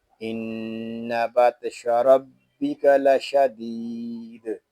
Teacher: وقف میں دال ساکن ہوگا تو اس میں قلقلہ خوب ظاہر کریں گے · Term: دال ساکن میں قلقلہ